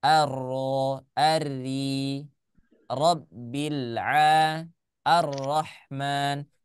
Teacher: Makhrajnya ada di ujung lidah kemudian mengarah ke langit-langit bagian atas. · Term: huruf ro